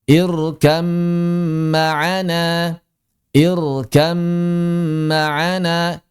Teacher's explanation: Maka di sini ba-nya hilang 100%, langsung masuk ke dalam mim, dan mimnya berarti menjadi mim bertasydid. Kalau mimnya sudah bertasydid, maka seperti yang telah kita bahas di bab gunnah, dia berarti menjadi gunnah yang sempurna, maka mesti ditahan 2 harakat.